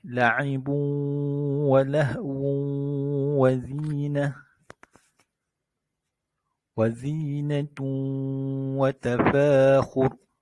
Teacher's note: Apabila huruf nun yang bertanda mati atau huruf-huruf yang berbaris tanwin datang selepasnya salah satu daripada 4 huruf iaitu ya, waw, mim, nun, maka akan berlaku idgham ma'al gunnah. Idgham bersama dengan dengung.